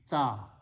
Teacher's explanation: When you pronounce ta, the tongue touches the teeth